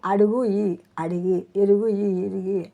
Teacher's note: తెలుగులో 2వ అక్షరం ఉకారం, 3వ అక్షరంలో ఇకారంతో తుల్యంగా మారటం ప్రచురం